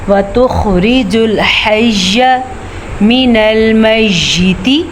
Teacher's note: खा को आपने पुर पढ़ना है लेकिन ता को बारीक पढ़ना है, क्योंकि अगर हम ता को मोटा करेंगे तो वो तो त्वा बन जाएगा।